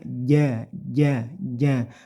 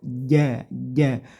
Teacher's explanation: J hati-hati pelafalan huruf Jim tidak banyak-banyak anginnya ja tapi ja ja ja punggung lidahnya ditempelkan di langit-langit mulut ja ja lahum Jannah nah Nun di sini ada tasdidnya sama